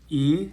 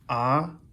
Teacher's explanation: e has a high F2 ah has a low F2